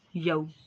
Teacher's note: यऊ पे भी वाउलीन का कायदा है, होंठों को गोल कीजिए, यानी कि यऊ ऐसे लंबा नहीं, यऊ, ठीक है।